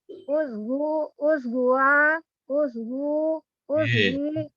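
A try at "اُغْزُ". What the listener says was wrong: Hurufnya diganti tuh. Ughzu.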